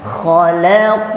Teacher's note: pantulannya simpan di dalam ya. Karena qaf itu makharijul hurufnya di dalam.